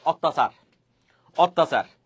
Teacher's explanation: শব্দের মাঝখানে অথবা শেষ যদি জফলা থাকে, তাহলে ওই জফলার যুক্ত যে বর্ণটা আছে সেটা 2 বার উচ্চারিত হবে